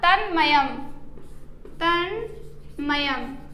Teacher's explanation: त के स्थान पर उसी वर्ग का पंचमाक्षर हो जाएगा